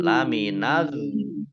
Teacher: Panjang dulu baru masuk ke huruf berikutnya. Yaitu lam, ya. Lamnya dibaca double, ya, ada tasdidnya. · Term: mat lazim musaqol kilmi